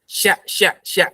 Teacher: Nggak terangkat lidahnya. Ya, merendah lidahnya. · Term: shin